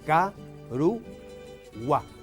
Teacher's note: Silabeado es ca-ru-gua. La sílaba que tiene la vocal tónica es gua y por ser final lleva acento prosódico.